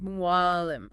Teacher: Right as your throat tightens and constricts to push food down, that exact muscular tension is where the ain sound is born. It's a voiced pharyngeal fricative, anatomically speaking. But practically, it's a tightening deep in the throat. Try to make an ah sound, but pull it way, way back and constrict those swallowing muscles.